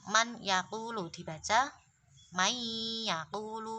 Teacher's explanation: Kalau yang ini nun sukun atau tanwin bertemu ya, nun, mim, wawu adalah contohnya man yaqulu dibaca mai yaqulu. Jadi bunyi dengungnya masuk ke huruf selanjutnya. Huruf selanjutnya tadi adalah ya, maka dibaca mai yaqulu.